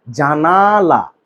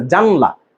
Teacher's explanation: আগে ছিল জানালা, আ ছিল, এখন সেটা হয়ে গেছে জানলা, আটা হারাই গেছে, স্বরধ্বনিটা হারাই গেছে। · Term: স্বরলোপ